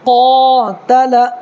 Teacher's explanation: بڑی قاف ہے، قاتل، تھوڑا پر کر کے پڑھنا ہے